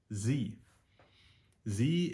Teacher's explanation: it's staccato it's quick so it's you'll know you're doing it correctly when you feel a little bit of pressure or tension build up in your throat and your mouth